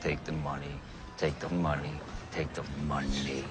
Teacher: he presses that tongue tip in quite hard and lets a lot of pressure build up behind it. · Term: T sound